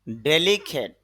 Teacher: ক্যাট না বলে খ্যাট বলব কেন খ সাউন্ড এসপিরেশন হবে